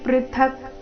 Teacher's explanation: ಚರಣದ ಕೊನೆಗೆ ವ್ಯಂಜನಕ ಮಾತ್ರ ಇದೆ ಪೃಥಕ ಅಂತ ಇಲ್ಲ